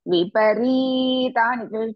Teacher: It should not be too much. It's only, the dirgha should be only 2 matrakalas.